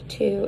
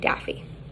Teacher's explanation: voiceless alveolar stop and voiced alveolar stop